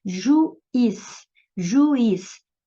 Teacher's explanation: A primeira vogal é U, a segunda vogal é o I, então formou um hiato, porque elas estão pronunciadas em sílabas separadas.